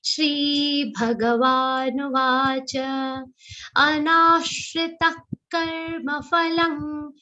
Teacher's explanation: Anashrita now will be dirgha, a very long sound, and then it will have an aghat of sh.